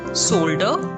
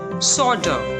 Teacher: in british pronunciation it is solder with r silent and in american pronunciation it's solder with l silent